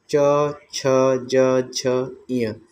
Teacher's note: इसको हम तालु व्यंजन भी कहते हैं, क्योंकि यह तालु की सहायता से बोलते हैं।